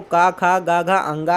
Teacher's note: कंठ से जो बोलने जाने वाले हैं, गले की सहायता से बोले जाते हैं,